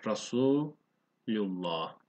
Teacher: Re değil, ra kalın okuyacağız. Yani a sesi vereceğiz.